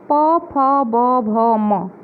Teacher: उष्ठ, प, फ, ब, भ, म। ये 5 व्यंजन जो हैं ये ओंठ से, ओठों के टकराव से इनकी ध्वनि निकलती है